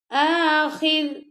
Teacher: را کی جو زیر ہے وہ ختم ہو گئی ہے، تو را جو ہے وہ ساکن ہو گئی ہے، تو آخر، ٹھیک ہے؟ را کو ہم نے باریکی پڑھنا ہے